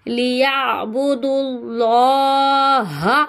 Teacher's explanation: اللہ کے لام کو پر یعنی موٹا پڑھیں گے, واو الف کو نہیں پڑھیں گے کیونکہ اس کے اوپر کوئی حرکت نہیں ہے, اس لیے ہم اس کو نہیں پڑھیں گے.